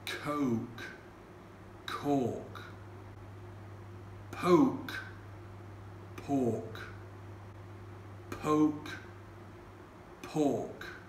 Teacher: the British speaker however is making a distinction between a o sound and an or sound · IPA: /əʊ/ ; and /ɔ:/